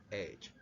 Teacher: fricative and glottal, this is the H.